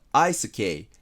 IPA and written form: aɪsəkeɪ (Eisuke)